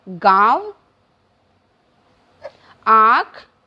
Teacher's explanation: शिरोरेखा के ऊपर चंद्रमा बना के उसके बीच में जो बिंदी लगती है उसे हम अनुनासिक कहते हैं और इनके उच्चारण के समय हवा मुख के साथ नाक से भी निकलती है, अर्थात हवा मुख और नाक दोनों से निकलती है।